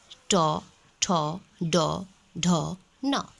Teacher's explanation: इसका उच्चारण स्थान जिह्वा का पूरा स्पर्श मूर्धा से होता है।